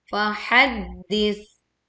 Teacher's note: tekan dal bertasydid, lalu kita berwakaf di huruf ta sukun dengan mengeluarkan aliran angin dan juga aliran suaranya.